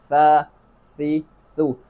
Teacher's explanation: زبان کی نوک جو ہے اوپر دانتوں پر لگانی تھی، دانتوں کے اندرونی کناروں پر